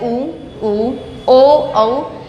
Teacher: ऐसे स्वर जिनको बोलते समय होठों की आकृति वृत्त के समान गोल होती है, उन्हें आप वृत्ताकार स्वर कहेंगे।